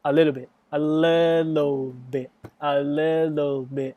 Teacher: if you speak fast you will link words together and sometimes we turn the T into D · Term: linking sound